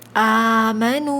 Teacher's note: یہاں پر بھی واو مدہ ہو رہا ہے، 2 کاؤنٹس کھینچیں گے